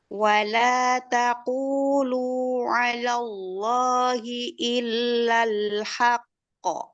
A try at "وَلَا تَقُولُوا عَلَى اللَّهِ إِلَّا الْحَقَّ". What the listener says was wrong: Lafdzul jalalah coba jangan dinabar. Alallah, langsung kelam. Alallahi.